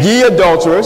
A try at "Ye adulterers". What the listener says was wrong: Sound like you're galloping there. Ye adulterers.